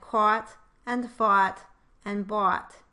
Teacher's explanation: With your lips rounded, you should get the aw sound.